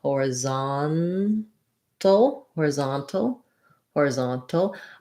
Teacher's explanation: Horizontal has the stress on the zon syllable. This is the letters OR do say or in this word.